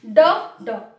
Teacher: ड और ढ के उच्चारण में जीभ पहले ऊपर उठती है, फिर मूर्धा को स्पर्श करती है, फिर झटके के साथ नीचे आती है।